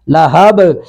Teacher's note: من اللہب، لہبن ہے تو یہاں پہ بھی وقف کریں گے، وقف کی وجہ سے با ساکن ہو گئی تو قلقلہ ہوگا